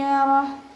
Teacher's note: ഹ നിർത്തുമ്പോൾ നമ്മൾ സുക്കൂന് കൊടുത്തിട്ട് നിർത്തി കൊടുക്കുക കേട്ടോ. നിർത്തുമ്പോൾ നമ്മുടെ തൊണ്ടയുടെ ഏറ്റവും അവസാന ഭാഗത്തു നിന്ന് ഹൻ്റെ ഒരു സൗണ്ട് വരുന്ന രീതിയിൽ വേണം നിർത്താൻ.